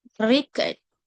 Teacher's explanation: Stress on the first syllable is highly pitched on re.